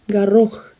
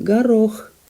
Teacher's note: The stress falls on the second syllable